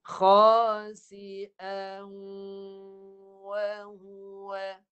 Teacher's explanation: Lepas baris tanwin yang kedua tu masuk waw. Sebahagian hidung, sebahagian mulut. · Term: dengung